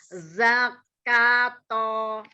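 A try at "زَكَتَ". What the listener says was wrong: Tidak ditabrakkan, tidak ditasdid. Tidak jangan ada hamzah sukunnya. Setiap huruf yang tebal jangan dikasih hamzah sukun. Jangan diayun, coba jangan diayun.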